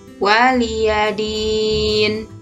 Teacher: Mim sukun berhadapan dengan huruf waw, maka sama ya, dibaca jelas tanpa dengung dan dinamakan izhar syafawi. Waliyadin, din di sini dibaca panjang 2 hingga 6 harokat atau ketukan dan dinamakan mad arid lis sukun